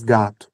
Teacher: É um fonema de U em posição final ali que não é tônico, né? É um som mais fraco, porque ninguém fala gatu, né? · em posição final, quando não é tônica, a gente troca muito o som de o por u.